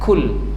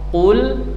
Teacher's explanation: perhatikan cara membaca qaf ketika berharakat dhammah keluar dari pangkal tenggorokan, pangkal lidah paling belakang. Aqsal halqi, aqsal lisan paling belakang.